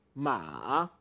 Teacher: two parts M you first have a falling part and then a rising part